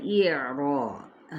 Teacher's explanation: الجاہلین، اب ہے اعراض، حمزہ کی زیر کو باریک جبکہ ادھر عین کو وسط خلق سے ادا کرنا ہے